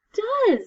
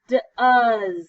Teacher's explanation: it sounds like a z at the end but it's an s and it sounds like a short u